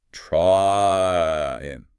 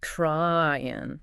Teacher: You start at A and you glide up to E. Your tongue actually moves as you say the word. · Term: diphthong